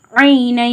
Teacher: இன்னும் சவுண்டை முற்றிலுமா நீக்கிட்டு யா சவுண்டை சேர்த்து ஒரு அலிஃப்க்கு நிகராக குன்னா பண்ணி ஓதணும். ஐனன் அப்படின்றத ஐனை அப்படி ஓதணும்.